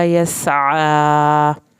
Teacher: यस सीन को सीटी की आवाज़ के साथ पढ़ के आइन को हल्क से पढ़ना है